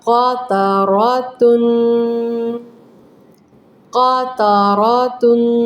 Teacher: ناک میں آواز لے کر جائیں گے اور غنے کو 2 سیکنڈ کے لیے اپنی ناک میں رکھیں گے، وہ بھنبھناہٹ کریں گے۔ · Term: غنہ